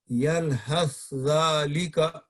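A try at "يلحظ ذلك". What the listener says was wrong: یلحظ، اب سا کو نہیں پڑھنا آپ نے، دونوں حرف کو اس طرح ملائیں کہ دوسرا حرف مشدد ہو جائے اور زبان ایک ہی طرح اٹھے، ایک ہی دفعہ اٹھے. یلحظ ذالک.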